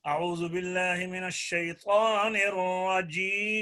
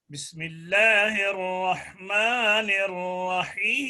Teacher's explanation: پہلے میں اس نے توسط کی ہے، دوسرے میں طول کیا ہے